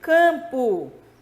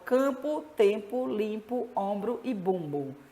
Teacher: O M serve simplesmente para nasalizar a vogal. Aqui no caso, nasaliza o A, nasaliza o E, o I, nasaliza o O, nasaliza o Vejam, campo, né?